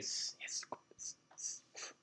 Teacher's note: So the glottis, there's no pitch when I say s. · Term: fricative